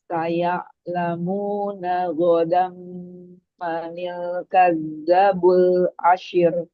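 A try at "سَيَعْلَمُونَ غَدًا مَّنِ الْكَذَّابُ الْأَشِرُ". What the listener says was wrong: manil kadzabu. Ada mat. Saya ramuna huruf ainnya alirkan sedikit. Anil kadzabu. Ada alif.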